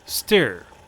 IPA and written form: stɜːr (stir)